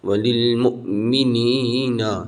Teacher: تھوڑا سا جھٹکا دینا، واو کے اوپر حمزہ ہے